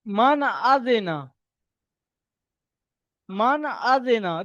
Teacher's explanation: তো যখন তানবিনের পরে হরফের হালকি ছয়টির মধ্যে থেকে একটি অক্ষর আসবে, তাহলে তানবিন এবং নুন সাকিনের আওয়াজকে বিনা গুণায় জাহির করে তাড়াতাড়ি পড়তে হবে, একে ইজহার বলে।